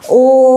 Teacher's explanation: 3 मात्रा का समय लगा इसमें 3 मात्रा का समय लगा, अति दीर्घ हो गया ये। तो ये जो है ये प्लुत स्वर कहलाता है।